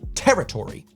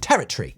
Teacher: in the states we would say territory you know four syllables whereas a Brit mashes it more into three